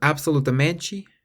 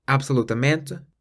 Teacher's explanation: this with a lot of words that end in meant m-e-n-t-e in Brazil they pronounce the T more like a CH whereas in Portugal the te on the end is pronounced more like just the letter T